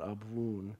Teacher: The way it's actually spoken in Aramaic is Abwoon, which is like blowing a kiss with a B there, the B-W sound, Abwoon.